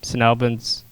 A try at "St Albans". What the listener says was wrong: St Albans. Why are you saying St? Saint. It's St Albans, so you say St. St Albans. St Albans.